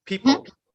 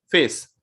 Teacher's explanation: when we are pronouncing sound pa we have to touch our lips like people and when we have to say face so we don't have to touch our lips